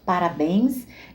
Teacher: parabéns é uma palavra oxítona tem acento na última sílaba